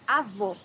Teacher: Here you have a closed O.